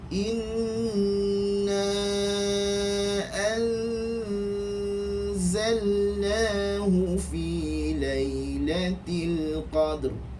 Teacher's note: Dibaca nipis kerana huruf selepasnya adalah huruf istifal, maka dengung ikhfa itu dibaca dengan keadaan nipis